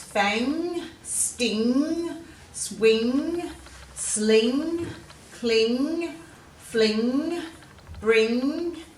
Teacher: these ones all have that ng sound in them, which is quite nasally. It's a bit hard to say.